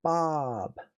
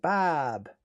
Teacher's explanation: even though it's an O, it's an ah sound. Bob.